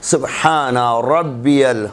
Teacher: را کے اوپر زبر آ جائے گا تو اسے تفخیم سے پڑھنا ہے، منہ بھر کے پڑھنا ہے. سبحان ربی منہ بھر کے پڑھنا ہے.